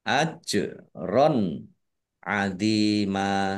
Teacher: Jim sukun bacaan qolqalah dibaca memantul ditampakkan pantulannya · fathah tanwin bertemu dengan huruf Ain bacaan izhar dibaca jelas